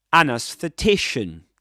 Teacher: Double stressed word. Main stress on t secondary stress on a.